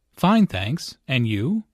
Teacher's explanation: Notice the rising intonation on and you.